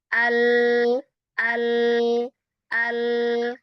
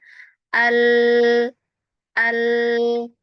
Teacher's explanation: Jadi suaranya belok ke kanan dan kiri lidah. Nah, al gitu ya kalau kita rasakan itu. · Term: sifat inhiraf